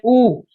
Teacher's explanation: जब हम उ का उच्चारण कर रहे हैं तो हमारे जो होठ है उ तो ये सर्कल बना रहे हैं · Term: ओष्ठ वर्ण